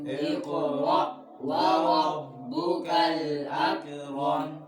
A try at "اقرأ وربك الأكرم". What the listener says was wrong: أك कलकला नहीं करना उंगली रखो बच्चों اقرأ وربك الأكرم